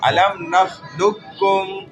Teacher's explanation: لقکم نہیں بولیں گے. نخلقکم لام ڈائریکٹ ڈنڈی والے کاف سے ملے گا. اچھا علم نخلقکم یوں پڑھیں گے.